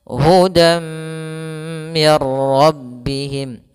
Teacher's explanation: nunnya dimasukkan ke huruf ro dan dia tidak lagi terbaca ada nunnya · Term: Idgham bila ghunah